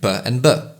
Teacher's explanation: plosives involve a momentary complete obstruction of the airf flow followed by a sudden release like P and B